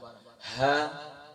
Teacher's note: یہ اقصائے حلق یعنی کہ گلے کے نیچے والے حصے سے اقصائے حلق سے ادا ہوتا ہے، یعنی باٹم آف دا تھروٹ سے ادا ہوتا ہے.